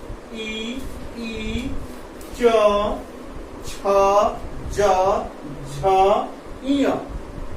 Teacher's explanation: यानी कि तालु से इसका उच्चारण होता है, यानी कि हमारी जीभ जो है तालु में रह सकती है